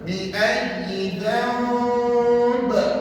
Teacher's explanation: Setiap huruf di hujung kalimah yang kita wakafkan kata ulama, huruf itu kamu kena matikan. Jadi ba tu tak jadi baris dua di bawah, dia jadi mati. Bila mati dia melentut tuan. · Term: qalqalah